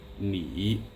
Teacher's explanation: And you can hear the third tone. You can kind of hear the word getting caught in my throat. Ni. All right?